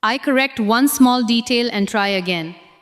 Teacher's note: Stress one, detail, and again.